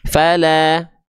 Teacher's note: buka mulutnya sambil senyum ketika fathahnya vokal A, tandanya dia huruf yang tipis